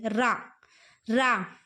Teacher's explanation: را کا مخرج ہے زبان کے کنارے اور پست اور اوپر کے سامنے کے 4 دانتوں کے مسوڑے سے ادا ہوتا ہے